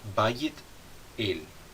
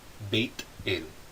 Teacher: substantivos com o ditongo ai mudarão esse ditongo para ei